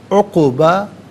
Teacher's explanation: خیرن عقباً، یہاں وقف پڑھیں گے تو عقبہ پڑھیں گے. قاف ساکن ہے لیکن آواز لوٹتی ہوئی محسوس ہونی چاہیے، کلکلہ ہونا چاہیے